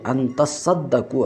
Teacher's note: تا کو صاد سے بدلا گیا اور صاد کا صاد میں ادغام کر دیا گیا